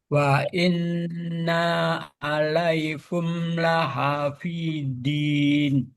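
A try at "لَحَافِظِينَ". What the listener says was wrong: jangan din. Lahafizin, lidahnya naik ke atas. dalnya masih kuat di situ. Dal sama do ini karena satu saudara ya, satu rumpun.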